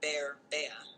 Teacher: So, for example, in a word like bear, bea, the tongue starts in a mid-open position and moves to a more centralized, relaxed position, producing the diphthong